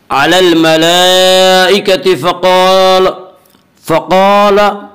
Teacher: फ़क़ाल क़ाफ को पुर पढ़ेंगे। क़ाफ हुरूफ़ मुस्तालिया में से है जिनका मजमुआ खुस्सा ज़ग़्तिन क़िज़ है।